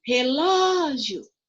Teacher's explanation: O ló é a sílaba mais forte na minha palavra aqui